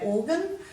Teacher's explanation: organ we tend to give it a schwa sound on the end